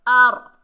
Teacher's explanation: रॉ साकिन से पहले ज़बर है तो रॉ को हमने मोटा पढ़ना है